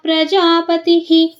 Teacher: ತಿ ಆದಮೇಲೆ ವಿಸರ್ಗ ಪತಿಹಿ ಆಗುತ್ತೆ